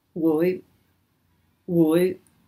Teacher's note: It's the low rising woi. And this is your will when combined with another verb.